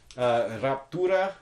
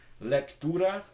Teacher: So in these cases, you have two voiceless stops in a row.